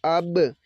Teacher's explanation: کیونکہ با حروف قلقلہ میں ہے، اس کی آواز کو ہلایا جاتا ہے